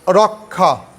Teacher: ক প্লাস মূর্ধন্য স। কিন্তু যখন উচ্চারণ করবা তখন খয়ের মতো